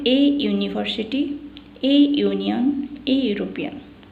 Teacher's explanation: These words are written with the vowels u or e, but they begin with the consonant sound yu.